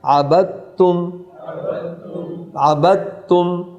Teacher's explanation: دوسری مثال دیکھیے، عبد تم، دال اور تا، دال سائلنٹ ہے، تا متحرک ہے، دال اور تا کا مخرج ایک ہی ہے، لہذا یہاں اس کو جب ادا کریں گے عبد تم، دال کی صفت آف ہو جائے گی، تا پڑھی جائے گی